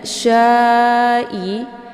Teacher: cara bacanya Mad wajibnya dipanjangkan boleh empat atau lima harakat harus konsisten dengan nafas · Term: mad wajib muttasil